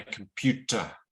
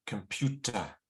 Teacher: the first and the last vowels are weaker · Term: stress